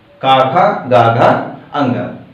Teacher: पूरा का वर्ग कंठ से बोला जाता है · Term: कंठ ध्वनियां